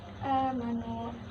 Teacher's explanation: mad badal karena ada alif yang dibaca panjang pada awal kalimat